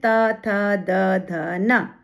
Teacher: यहां पर जीभ हमारी दांतों को स्पर्श करती है तो ये त दंत हो गए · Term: दंत्य वर्ण